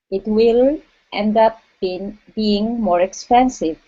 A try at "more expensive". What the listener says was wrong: Okay, watch that R on more. Instead of more expensive, it's more expensive.